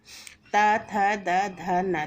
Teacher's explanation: देखो, जब हम बोल रहे हैं तो जीभ का स्पर्श हमारा दांतों से हो रहा है और इसीलिए ता वर्ग की ध्वनियों को दंतव्य कहा जाता है।